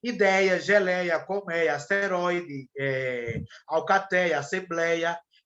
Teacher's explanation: é um som aberto ele é apenas vocal ele não é nasal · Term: ditongo aberto